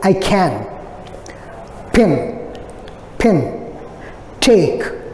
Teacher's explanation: The initial sound, k, as in I can, pin, take, these have an aspiration.